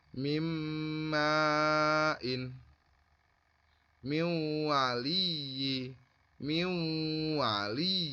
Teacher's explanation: Cara membacanya sepertinya seolah-olah nun matinya ini tidak ada, tapi tatkala ditulis nun matinya ini ada. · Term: idgham bihunna